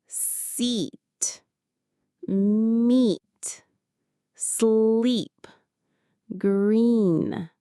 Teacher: To make it, you need to smile. Your lips should be pulled wide and your tongue is high and forward in your mouth. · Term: long E sound